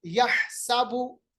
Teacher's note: تیسری آیت یحسبو، ہا کا مخرج یاد رکھیے گا، وسط حلق یعنی گلے کا بیچ والا حصہ جہاں سے ہا ادا ہو رہا ہے